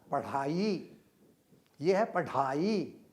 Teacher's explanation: ढ में आप सीधा टकरा कर वापस ले लेते हैं उसको, और ड़ में जीभ रगड़ती हुई आती है।